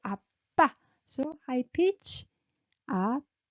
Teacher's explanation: When you call someone, you raise your tone. So 아빠. So high pitch.